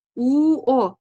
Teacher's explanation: Talaffuz qilganimizda tilimiz, labimiz oldinga cho'ziladi. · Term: Lablangan unlilar